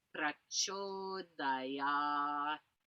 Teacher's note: And then the T, like I can hear myself making the T, but it's so little. And that last A is long. It's got a line above it.